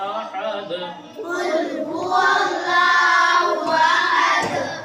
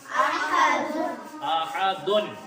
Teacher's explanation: اس پہ جب وقف کرنا ہو تو اس کو ساکن کر دیتے ہیں. تو دال کے اوپر بھی دیکھیے دو پیش ہے، اس لیے جب اس پر وقف کریں گے تو احدن سے احد بنا دیں گے